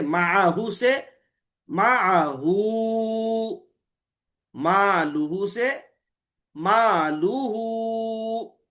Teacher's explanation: زبریہ پیش رہنا، اور پھر اس کے بعد کا جو حرف رہنا وہ متحرک رہنا، تو صلہ بالواو، واو کے ساتھ، یعنی واو مد وہاں پر اس کو جو ہے کریں گے، صلہ بالواو ہوگا، یعنی اس کی حرکت کو حرف مد کی مقدار میں دو حرکت دراز کر کے پڑھیں گے، جیسے معہو سے معہو، مالوہو سے مالوہو، وغیرہ۔